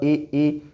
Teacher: इ ई ऐसे स्वर हैं ऐसी ध्वनियां है जिनका उच्चारण कहां से होता है तालु से